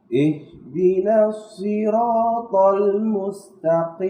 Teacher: Jadi huruf qaf ini ada di pangkal lidah.